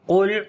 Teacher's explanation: Qaf we read in heavy sound due to isti'la letter.